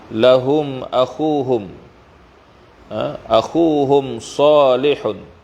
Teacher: Ini adalah izhar syafawi, hukum mim mati ya. Izhar syafawi, dizahirkan sebutan mim tanpa dengung